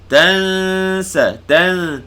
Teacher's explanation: Tanwin bertemu sin, ikhfa hakiki. Tansa, tan, panjangkan dengung.